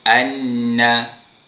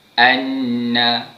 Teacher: Untuk menyebut huruf nun dengan bacaan makhraj yang tepat, kita sentuhkan ataupun kita tekankan hujung lidah kita pada langit keras bahagian atas.